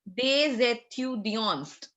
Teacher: Because étudiant is starting with a vowel and DES is ending in a consonant. So we carry forward the sound of S along with E.